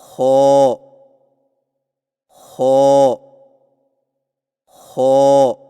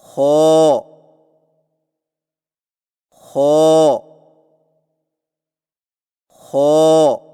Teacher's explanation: जुबान की जड़ को तालू की तरफ बुलंद करते हुए मोटी आवाज में पढ़े